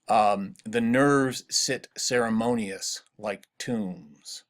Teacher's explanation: That line has 10 syllables, and you can also hear, I hope, the alternating unstressed followed by a stressed pattern in the rhythm. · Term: iambic pentameter